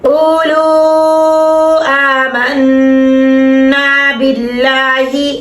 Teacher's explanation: اب اللہ کا نام باریک کر رہے ہیں, پیچھے زیر ہے